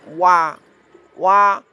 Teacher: huruf wa ini dua bibir tidak bertemu